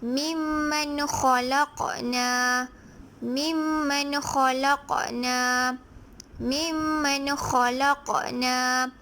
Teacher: apabila nun mati bertemu dengan huruf kha, maka ia dibaca jelas